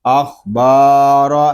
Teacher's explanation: پڑھیں گے، با الف زبر با، اخبا، را زبر را، اخبار، یہاں را کو ہم پر پڑھیں گے کیونکہ را کے اوپر زبر آ رہا ہے